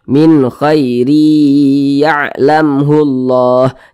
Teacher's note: Ini huruf mim sukun di depannya huruf ha, bukan huruf ba, bukan huruf mim, maka hukumnya adalah izhar syafawi. Karena dia izhar maka dibaca jelas dan tidak berdengung. Jadi dibaca pendek saja.